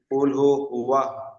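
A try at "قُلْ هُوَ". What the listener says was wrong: কুলু নয়, কুল হু। কুল হু, কুল কফ লাম পেশ কুল আলাদা হবে, হা পেশ হবে। কুল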